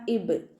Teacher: ബ കൽക്കലയുടെ ലെറ്റർ ആയതുകൊണ്ട് ഫുൾ സുക്കൂനും കൊടുക്കുകട്ടോ